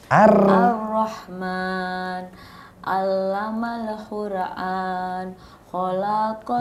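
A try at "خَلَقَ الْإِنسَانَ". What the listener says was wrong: Nah, ini jangan ditahan di kho ya. Itu kan 1 tuh.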